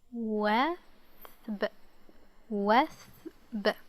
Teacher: Notice how we attach no vowels to the Tha.